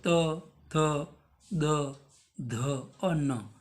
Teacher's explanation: दोनों दांतों के ऊपर वाले और नीचे वाले दांतों के बीच में से जीवा बाहर आ रही है